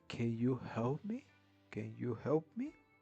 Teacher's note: In English, we're using yes or no questions and the intonation is rising.